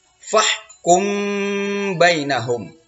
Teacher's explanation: Kemudian fahkum bainahum. Ini ada ikhfa syafawi. Ini dengung nak ya, mim mati bertemu ba.